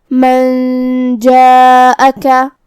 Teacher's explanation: جیم حروف الاخفاء میں سے ہے، اخفاء کا معنی ہے چھپا دینا، تو ہم یہاں نون ساکن کو چھپاتے ہوئے بغیر ظاہر کیے ہوئے لیکن غنہ کے ساتھ یہ حکم کو ادا کریں گے